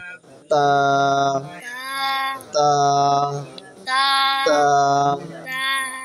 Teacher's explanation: জিহ্বার আগে সামনে উপরে দুই দাঁতের গোড়ার সঙ্গে লাগে